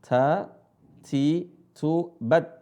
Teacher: huruf ta ada desisnya sedikit